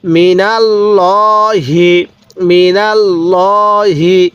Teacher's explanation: এরপরে মিমজের মি, নুন লাগবে এই লামের সাথে, নাল, মি নাল, লাম খারা জবর ল, হাজের হি, মিনাল ল হি, মিনাল ল হি। এখানে আল্লাহ শব্দের লামটা আমরা পোর করে পড়ব, অর্থাৎ মোটা করে পড়ব।